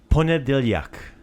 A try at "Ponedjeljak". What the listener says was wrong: Ponedjeljak. Ponedjeljak. Dia. Yeah. But there's an E in between those two. Ponedjeljak. Djeljak. Ponedjeljak.